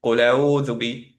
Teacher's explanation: মনে হবে যেন লায়ের সাথে অ্যাকচুয়ালি হামজা কানেক্টেড। ওকে, লায়ের মাদ, কুল যে সুকুনে আছে লামটা, সেটা বোঝা যাবে না।